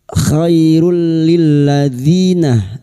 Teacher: Khairul, khairul, duma tanwin bertemu lam idgham bila guna, nun sukun atau tanwin yang bertemu dengan 2 huruf ini yaitu huruf lam dan huruf ra, masuk tanpa mendengung, masuk pada huruf lam tanpa mendengung, tanpa ditahan lama-lama.